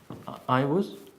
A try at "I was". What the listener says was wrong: Not was, but us. So I'm changing the, look, it's in italics, it means it's optional.